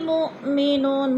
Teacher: مؤ پہ حمزہ ساکنہ ہے، جھٹکا دے کر پڑھیں گے